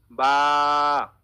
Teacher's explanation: এখানে দেখেন লেখা রয়েছে দুই ঠোঁটের ভেজা অংশ থেকে, দুই ঠোঁটের ভেজা অংশ থেকে বা উচ্চারিত হয়। উপরের ঠোঁটের ভেজা অংশ, নিচের ঠোঁটের ভেজা অংশ, এই ভেজা অংশ লেগে বা উচ্চারিত হবে।